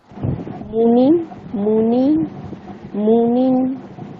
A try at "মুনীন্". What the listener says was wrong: হ্যাঁ মুনিন, নিটা একটু টানলেই তো হয়ে যাচ্ছে, ব্যাস।